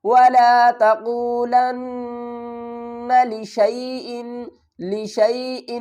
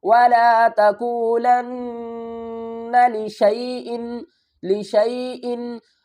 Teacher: وَلَا تَقُولَنَّ لِشَيْءٍ، لِشَيْءٍ، اس کو ہم نے لشا ان نہیں پڑھنا، کیوں؟ کیونکہ الف کو ہم نہیں پڑھیں گے، ہم کیا کریں گے؟ شین کو یا سے ملائیں گے، شین یا زبر شئی، لشا نہیں لشئی۔